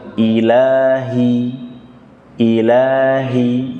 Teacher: Ha, pengucapannya keluar dari tenggorokan paling bawah, lewat dada, tapi bukan ditekan di dada